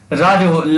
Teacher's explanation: ला जो होता है ये पार्श्विक होता है, और ला जो होता है आपका दंत और दंत से भी बोला जाता है।